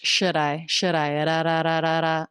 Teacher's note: the D is a flap sound because it comes between two vowels or diff thongs